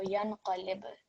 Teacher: the ba sakin, which will be vibrated, or a jerking sound will be produced. So yanqalib. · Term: qalqala rule